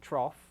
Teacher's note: I had a T that overlaps with a R in trough. It's almost like a ch sound